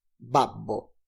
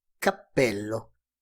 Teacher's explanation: manteniendo el aire con los labios para dejarlo salir luego de manera explosiva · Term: sonido oclusivo